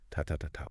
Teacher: Each syllable gets roughly the same amount of time, like rhythmic beats. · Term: syllable timed